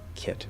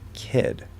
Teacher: there is a difference in vowel length for the I sound between kit and kid